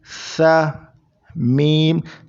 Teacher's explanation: سا میں زبان آگے کے دو دانتوں میں لگے گی